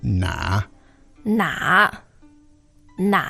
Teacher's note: the tone on the na is the third tone